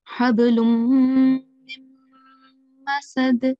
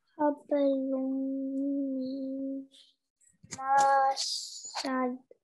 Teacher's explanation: So these are the two places where we have to merge the sound of noon into the following mushaddad letter, okay? And hold the nasal sound for 2 seconds. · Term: idgham